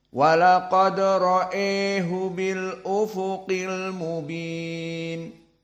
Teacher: Abu Amr albashri membaca dengan imalah alhamzah